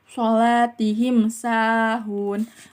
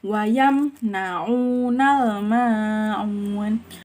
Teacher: Idhar sapawi yaitu bunyi mim disebut dengan jelas tanpa dengung.